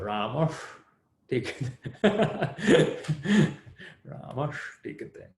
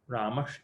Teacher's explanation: where your tongue goes for ta, that's where your tongue goes for sha